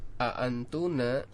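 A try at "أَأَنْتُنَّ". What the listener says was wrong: Ya, antunna ada tasdidnya.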